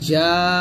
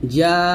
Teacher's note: যেহেতু নুনের উপর তাসদিদ আসছে তাই এখানে আমার গুণ্য করতে হবে, ওয়াজিব গুণ্য।